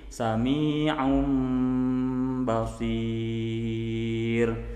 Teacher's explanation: Di sini dijelaskan bagian ketiga dari hukum nun sukun dan tanwin adalah iqlab, yaitu ketika menghadapi huruf ba, maka tukarkan atau ganti makhraj nun atau tanwinnya tersebut ke mim disertai gunnah serta ikhfa, jadi agak samar, mim ba'di.